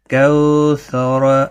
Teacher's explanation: کیف کاف واو زبر کو، کاف واو زبر کو، سا زبر سا، را زبر را، کوثر. دیکھو سا اور را کو جلدی پڑھنا ہے، را کو پر بھی پڑھنا ہے. کو واو لین ہے.